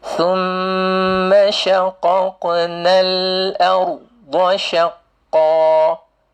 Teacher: Bila kita sambung, tak ada mad asli dia.